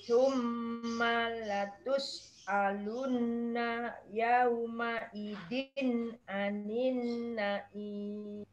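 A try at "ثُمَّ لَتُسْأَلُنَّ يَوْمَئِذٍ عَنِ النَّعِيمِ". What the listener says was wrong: Nggih, matur nuwun.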